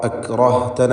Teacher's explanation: അക്റഹ്തന എന്ന് പറയുമ്പോൾ റായിന് തഫ്ഖീം കൊടുക്കണം